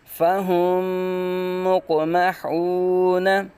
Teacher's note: آگے فَهُمْ مُقْمَحُونَ، حا کی واو سے ہی نکالیں گے، قاف ساکن میں قلقلہ کریں گے، دیکھیں میم ساکن کے بعد دوسری میم آ رہی ہے تو ادغام شفوی ہوگا، میم مشدد میں ہمیشہ غنہ ہوتا ہے